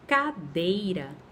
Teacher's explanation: eu tenho o E e o I. Esse E e I vão ficar na mesma sílaba. Então, eu tenho um ditongo.